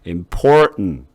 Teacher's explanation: important 이렇게 계속 올라가는 게 아니에요. 계단식으로 올라가는 게 아니에요. 소리가 important 이게 아니라 important 내려오는 거예요.